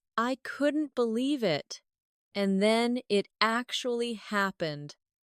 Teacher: with an excited rising tone